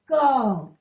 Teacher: जब आप उच्चारण कर रहे हैं तो क के साथ क के बाद हमें अ का स्वर आ रहा है।